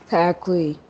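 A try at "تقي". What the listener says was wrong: Elongated.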